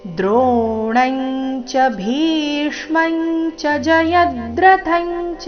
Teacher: ಅನುಸ್ವಾರಗಳ ಉಚ್ಚಾರಣೆ ಚ ವರ್ಗದ ಅನುನಾಸಿಕದ ರೀತಿ ಬರಬೇಕು